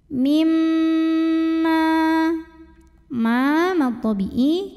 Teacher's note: cara bacanya dengung bunyi m nya tahan kurang lebih dua harokat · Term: sunnah musyadadah, gunnah musyaddadah